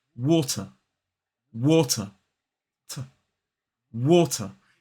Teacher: in a modern British RP accent, the T in the word water is pronounced quite cleanly and quite crisply. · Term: British T